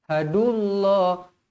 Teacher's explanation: lafzul jalalah dibaca tebal dua harakat kerana sebelumnya berbaris depan walupun ada huruf wau di sini tapi jangan panjangkan dia jangan